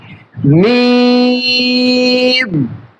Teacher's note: দুই ঠোঁটের শুকনা অংশ থেকে।